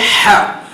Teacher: ح ہمارے حلق کے شروع حصے سے نکلے گا، جیسا کہ منٹی وغیرہ کھانے کے بعد جیسا ٹھنڈی ہوا نکلتی ہے، ح اس طرح اسے ادا کیا جائے گا۔